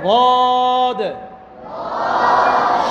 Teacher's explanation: মুখ যেন গোল না হয়, বো এমন না হয়, বা স্বাভাবিক থাকবে।